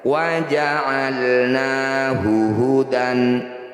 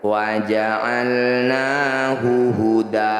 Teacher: Cara bacanya bunyi fathah tanwin kita ganti jadi fathah panjang. Jadi awalnya wa ja'alnahu hudan. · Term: mad iwad